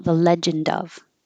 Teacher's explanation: if there's a vowel after it like Legend of is usually together then you'll hear the D release for the vowel